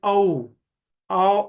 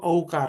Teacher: औ होठ आगे आकर गोल बनने चाहिए।